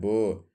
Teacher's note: अल्पप्राण घोष व्यंजन वर्ण का उदाहरण है